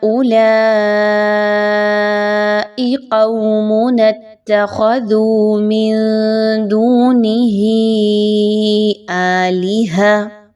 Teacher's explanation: پہلے آپ نے ہا کی مد کو کھینچا